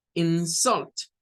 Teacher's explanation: aquí comenzamos con un sonido bajo o débil y luego se sube para decir la segunda